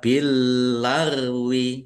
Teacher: Lam yang kedua roin sukun ini bukan qalqalah. Jangan dipantulkan ya. Jangan dibaca bilagwi, tapi dibaca billagwi aimanikum.